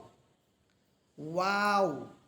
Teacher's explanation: দুই ঠোঁট গোল করার পর দুই ঠোঁটের মাঝে যে শূন্য জায়গা থাকবে সেখান থেকে যে আওয়াজটা বের হবে সেটাই হচ্ছে ওয়াও